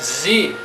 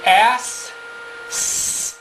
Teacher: when we vibrate the vocal cords pronounced Z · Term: voiced sounds